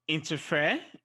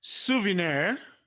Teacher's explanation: the stress is placed on the end syllable